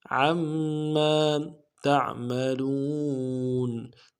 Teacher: عین کو میم کے ساتھ ملانا ہے، میم کے اوپر تشدید زور دیں گے، اگلے میم کے ساتھ الف مدہ ہے، ایک الف دال میں کھینچیں گے